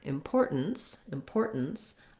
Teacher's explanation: It's just different because it has second syllable stress. So the poor syllable is long. And then again, we have that stop T.